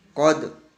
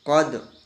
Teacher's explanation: Jadi dalnya di sini ya, dalnya di sini tetap terucapkan ya, namun sedikit sekali ya untuk qalqalahnya. Qad.